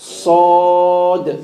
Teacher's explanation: Sod is a heavy letter. So the back of the tongue should be going upwards. The sound should be coming from the mouth.